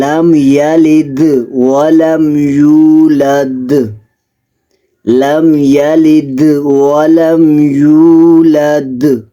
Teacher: یہاں پر خوب قلقلہ واضح کرنا ہے دال پہ